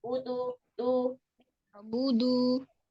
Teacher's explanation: Budu, ujung lidah lebih ke depan lagi. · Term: huruf dal